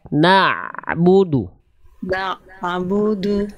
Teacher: Ain dilafalkan dari tengah-tenggorokan naudu suaranya mengalir sedikit nabudu na na sedikit mengalir suaranya naud